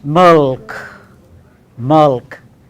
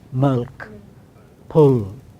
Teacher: the back part of our tongue will move towards velum. It is a vela sound, vela, milk, pull.